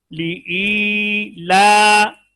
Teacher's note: یہ ای اور لا ایک جیسا لمبا ہو